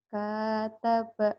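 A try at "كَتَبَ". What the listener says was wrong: Nggak ada yang panjang. Kataba.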